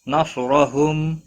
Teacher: او واو مدہ ہے، ایک الف کے برابر کھینچ کر پڑھیں گے، نہ کو کھینچنا نہیں۔ نصرہم، صاد حروف مستعلیہ میں سے پر پڑھا جائے گا، اس پر قلقلہ نہیں ہونا چاہیے، را زبر کی وجہ سے پر پڑھا جائے گا، وقف کی صورت میں میم ساکن پڑھا جائے گا، لیکن یہاں پر لام دیا ہوا ہے، لا ملانا بہتر ہے۔